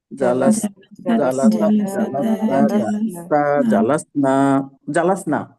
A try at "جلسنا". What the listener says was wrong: জালাসনা টান হবে না। জালাস্তু জালাসনা।